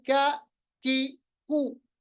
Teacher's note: कौफ पढ़ते वक्त जुबान की जड़ को ऊपर सॉफ्ट प्लेट के साथ मिलाते हैं, जबकि कैफ को पढ़ते वक्त जुबान की जड़ थोड़ा सा आगे हार्ड प्लेट की तरफ ले जाते, तो कैफ अदा होता है। कैफ, कैफ पढ़ते वक्त कोई मोटा नहीं अदा होती आवाज, और कैफ करते वक्त आवाज को वापस भी नहीं लाना होता है।